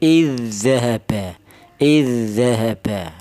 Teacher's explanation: Langsung diidgamkan ke huruf dal yang kedua ya. Dal yang mati ini langsung dimasukkan ke huruf dal yang ee kedua ee diberi tasdid. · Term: idgham mutamasilin